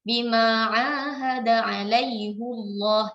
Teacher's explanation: Ha dhamir di belakangnya ya, fihi, alaihi ya, itu kita baca hanya dengan kasrah. Tapi pada kata ini alaihu kita baca dengan dhammah huruf ha-nya, tidak kita baca dengan alaihi